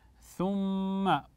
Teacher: الاخفاء ايضا من الاحكام في قوله سبحانه ثم هنا ميم مشدده والميم المشدده حكمها احسنتم الغنه بمقدار حركتين